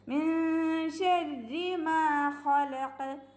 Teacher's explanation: മീമിൻ്റെ കൂടെ അലിഫ് മദ് ഉണ്ട്, അപ്പോൾ രണ്ട് കൗണ്ട് നീട്ടുക